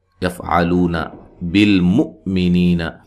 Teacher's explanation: یہاں حمزہ کو جھٹکے سے ادا کرنا ہے